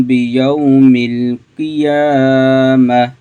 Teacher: یہاں پہ واولین کا قاعدہ ہے، اس کو ہم لمبا نہیں کریں گے